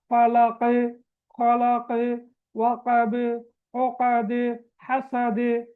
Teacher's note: நாங்க குலுக்கி ஓதணும். அது கல்கலா குபுரான்னு சொல்ற பெரிய கல்கலா.